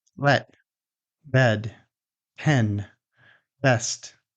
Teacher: This is a short vowel, which means that your mouth stays more stable and there's no glide or movement. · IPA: /ɛ/